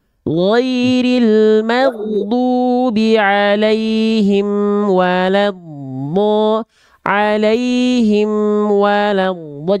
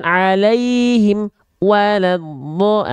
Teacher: Nah, jangan berhenti alaihim ke wawnya, jangan di alaihim wala. Emnya nggak boleh terputus. Mim punya sifat tawasud.